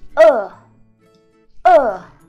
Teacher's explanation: you have to give it four tone going down so Oh your tongue plays relaxed so oh oh means hungry